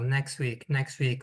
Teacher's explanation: Next week, next week we don't actually pronounce the T. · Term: elision